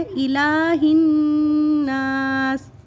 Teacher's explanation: چھوٹی ہاء ہے، یہ ہم حلق سے نہیں نکالیں گے